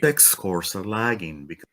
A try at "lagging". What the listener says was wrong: I would say that when you're saying lagging, it sounds to me like your placement's going high on that second syllable. Lagging versus lagging. Do you know that difference? Lagging. Say lagging. So just watch out for that part there.